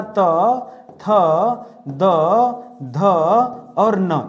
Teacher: आपका जीभ जो है ना, वो आपके दांत को छूता है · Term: दंत वर्ण